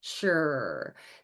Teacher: you have the elevation of the tongue, and you also have your lips are protruded forward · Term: pelletization